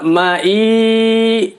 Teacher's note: mad tabi'i bertemu hamzah di satu kalimat, baca panjangnya wajib 5 harokat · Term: mad wajib muttasil